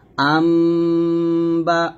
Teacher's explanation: নুন সাকিনের পরের অক্ষর যদি বা আসে তাহলে সে নুন সাকিনটাকে মিমের মত পড়তে হয় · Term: ইকলাব